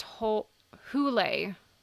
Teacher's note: the word is pronounced as two syllables with stress on the first